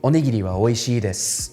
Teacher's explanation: So with nakadaka, the pitch starts low and goes up similar to heiban, but somewhere in that word, it's going to drop back down, creating a sort of hump